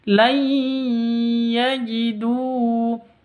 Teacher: Nun mati bertemu dengan ya. Cara bacanya masuk ke ya. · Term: disertai dengung